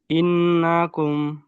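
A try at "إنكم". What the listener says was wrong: হুম ইন গুন্নাটা একটু বেশি করে করতে হবে। ইন্নাকুম।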